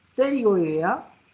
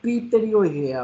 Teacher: la T es medio silenciosa en español